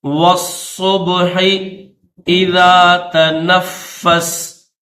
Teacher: واللیل اذا عسعس، والصبح اذا تنفس، واو کو صاد کے ساتھ ملائیں گے